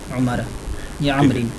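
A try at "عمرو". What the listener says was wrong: کیوں راہ کے آگے واہ ہے تو پھر عمر پڑھے؟ راہ کے آگے واہ ہے کہ نہیں؟ عمرن پڑھے۔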